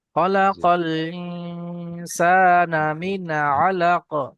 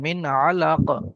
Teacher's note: এখানে নুন সাকিনের পরে আইন এসছে, এটা গুন্না হবে না, ইজহার।